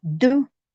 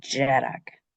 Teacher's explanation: D broad is do, and D slender is j, like in Jarak.